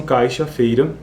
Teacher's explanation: O glide ou a semivogal não se manifesta foneticamente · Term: redução de ditongos